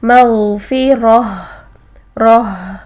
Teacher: اور ہا ساکن میں ہم نے نوٹ کیا تھا کہ ہا ساکن میں آواز اور سانس کو جاری رکھتے ہیں. تو جب ہم اس ورڈ پر وقف کریں گے تو ہم کریں گے مغفرہ، رہ یہ.